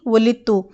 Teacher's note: لیکن تا پر تشدید اور پیش ہے، اس لیے دال نہیں پڑی جائے گی